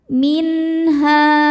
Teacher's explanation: Ada hukum izhar halqi karena nun sukun bertemu dengan huruf halqi atau tenggorokan yaitu ha. Cara bacanya nun ini dibaca dengan izhar atau jelas n. Minha. Ha hukumnya mad tabi'i dhahiri sebab ada alif sebelumnya berharokat fathah.